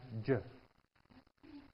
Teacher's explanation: the air is released not explosively but with friction and it's one movement it's one sound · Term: affricate